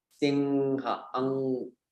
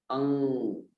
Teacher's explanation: It's that nasal sound where you don't even need to close your lips. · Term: anusvara